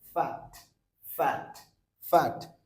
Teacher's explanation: মূল সাউন্ড এটা ফ হয় না, সাউন্ড হয় এরকম একটা বাতাস বের করা সাউন্ড